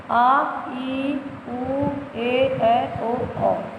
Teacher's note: दीर्घ स्वर जिन स्वरों के बोलने में मूल स्वरों के से लगभग दुगुना समय लगता है वे दीर्घ स्वर कहलाते हैं